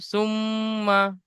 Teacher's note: মিমের উপর তাসদিদ আসলে গুণনা করা ওয়াজিব, তাই একালি পরিমাণ গুণনা করে পড়তে হবে।